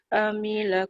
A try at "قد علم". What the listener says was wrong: Alima. Terbalik. Lam dulu baru mim.